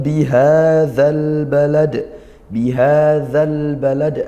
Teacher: bihadzal balad, ha dibaca panjang mad tabi'i